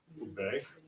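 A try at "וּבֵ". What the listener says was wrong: Uve. Right, not Ube. No Dagesh. No Dagesh in there.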